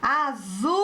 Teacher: A sílaba tônica é o ZU.